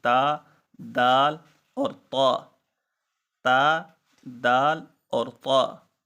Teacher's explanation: دانتوں کی جڑوں پر جب زبان کی نوک لگے گی تو یہ 3 حروف ادا ہوں گے، تا، دال اور طا، تا، دال اور طا.